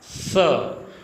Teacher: तो आपको संक्षेप में याद रखना है स का श होना। स दंत्य, जब आप स का उच्चारण करोगे तो आपकी जीभ है दांत के पास में चली जाएगी और बीच में से थोड़ी सी हवा निकलेगी। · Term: दंत्य स